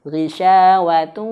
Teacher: betul-betul sengaukan atau dengungkan masuk ke dalam hidung sampai ke sini. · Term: idgham bi gunnah